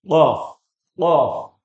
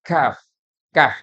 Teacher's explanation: qof lebih dalam Kaf agak keluar lagi